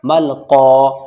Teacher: मीम लाम ज़बर मल, क़ाफ अलिफ ज़बर क़ा, देखिए क़ाफ जहाँ भी आएगा हमेशा मोटा पढ़ा जाएगा, और क़ाफ के साथ अलिफ भी मोटा पढ़ा जाता है